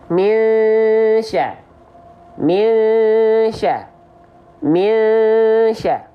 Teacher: Bukan hanya sekedar samar, tapi dia dengung. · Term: ikhfa hakiki